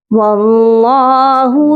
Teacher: यहाँ पर अल्लाह की लाम को मोटा पढ़ा जाएगा और एक अलिफ की मिक़दार लंबा भी किया जाएगा।